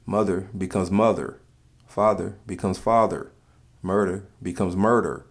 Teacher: The ER is very stressed. The vowels are prolonged as well. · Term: the ER sound